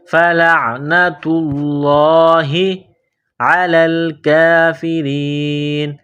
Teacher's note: لفظ اللہ کے نام سے پہلے پیش ہے تو لفظ اللہ کے نام کو موٹا کرنا ہے، فلعنۃ اللہ علی الکافرین، لام کو لام کے ساتھ ملانا ہے، کاف کو باریک کرنا ہے، 1 الف کے لمٹ میں کھینچنا ہے، علی الکافرین، را کے نیچے زیر ہے، را کو باریک کرنا ہے، علی الکافرین۔